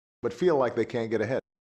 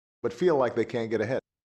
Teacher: an L plus H star pitch accent followed by an H star and an ll boundary tone